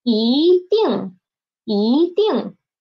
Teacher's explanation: Ding is the fourth tone, so it changed into second tone.